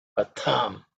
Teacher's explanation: patham is the tha of the second letter in the tha varga, so it has to be aspirated